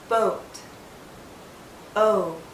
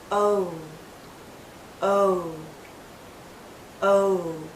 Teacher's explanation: O. But as we come to the end of this vowel sound, our lips become even tighter. It finishes actually with a slight oo sound. O. Do you see how my lips start larger and then pull in to a tighter circle?